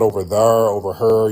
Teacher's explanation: A lot of black folks who live by river areas like the Mississippi River, the Ohio River, Kentucky River, a lot of them have that intrusive R